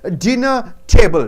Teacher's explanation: Dinner should be stressed.